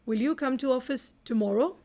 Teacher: So tomorrow has to be stressed. That's an adverb.